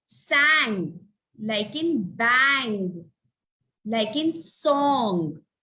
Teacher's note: Now, whenever the ng comes in the word, you will put one, it is a one sound, and you will say it as where we G, we don't pronounce it, it is kept silent, we just stretch the N